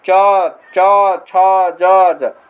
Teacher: च छ ज का जो च वर्ग जो है उसका उच्चारण स्थान हो जाएगा तालव्य तालू से है